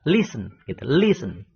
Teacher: Karena ten e-nya, silabel terakhir yang ditekankan. Ternyata penekanannya bukan di e terakhir itu, tetapi di i-nya itu ditekankan.